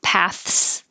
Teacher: it can be voiceless th and a voiceless s